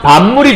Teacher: 파열음인 비읍이 비음인 미음의 영향을 받아서 미음으로 바뀌었다. 비음화잖아요. 여러분, 남성화라고 하면 남성처럼 변하는 거죠.